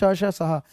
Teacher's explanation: संघर्षी संघर्ष क्योंकि ये जीवा और तालवे में जीभ टच जहां करती है ना वहां बड़ी रगड़ खा के निकल जाते हैं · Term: संघर्षी व्यंजन